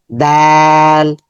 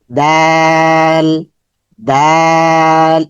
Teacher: জিহ্বার আগা উপরের দাঁতের গোড়া স্পর্শ করব।